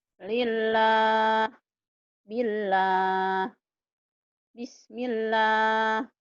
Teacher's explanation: Lillah, ini tipis. Kenapa tipis? Karena sebelum pada Allah baris di bawah.